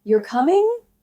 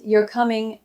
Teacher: If I say it with a rising tone, you're coming, I'm asking.